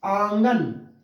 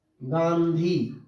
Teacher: अनुस्वार जिसमें केवल नाक का प्रयोग होगा